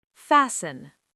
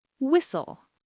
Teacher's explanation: When T comes between S and another consonant, it often disappears. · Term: silent